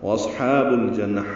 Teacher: یہاں پہ با کو لام سے ملانا، یہ لام پڑا جا رہا ہے، یہ اظہار قمری ہے، جیم کی وجہ سے لام پڑا جا رہا ہے · واو ہونٹوں کی نا تمام گلائی سے ادا کریں گے. صاد ساکن پہ ہمس ہوگا جیسے اصحاب النار میں پڑا. · ہا کو دو حرکات لمبا کریں گے